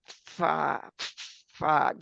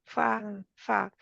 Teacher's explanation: ऊपर वाले दो दांतों का सिरा जो है वो नीचे वाले दो जो होंठ है उनके ऊपर जाकर लग जाता है